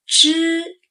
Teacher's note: First tone, flat and high